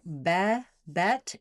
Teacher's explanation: My jaw is also opening, but the back of my tongue is staying fairly high. So for bebet, it feels pretty flat. The back of my tongue is going to be higher than the front of my tongue. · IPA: /ɛ/